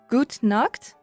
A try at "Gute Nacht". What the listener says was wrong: Well, you basically said good naked. So there is gute Nacht. Nacht.